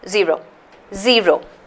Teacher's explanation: zero zero the stress is on the first syllable how do you indicate the stress it's just a little apostrophe